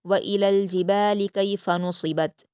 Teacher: इसमें नुसिबत में स्वाद को पुर पढ़ना है।